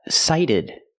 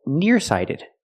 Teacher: You add ed and you have sighted. The T is a fast D, not sighted, but sighted.